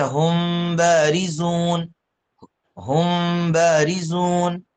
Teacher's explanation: جی یہ میم ساکن کا دوسرا حکم جو بیان کیا وہ میم ساکن کا پہلا حکم ہے ادغام، دوسرا ہے اخفا، یعنی اگر میم ساکن کے بعد حرف با آتا ہے تو اخفا ہوگا میم ساکن میں